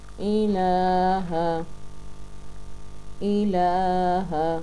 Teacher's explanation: الہ کے لام پہ بھی کھری زبر ہے، اس کو بھی ایک الف کے مقدار کے برابر لمبا کر کے پڑھیں گے